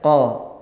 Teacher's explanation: Misalnya kita huruf qaf, qa keluar dari pangkal lidah